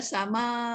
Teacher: Jadi bila kita nak waqaf sama tu, buat 6 harakat lah. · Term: mat wajib muttasil